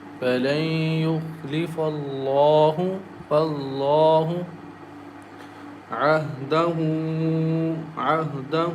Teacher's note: Lam is thick here because it comes after fatha letter